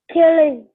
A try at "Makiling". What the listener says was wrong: It's makiling. It is single L.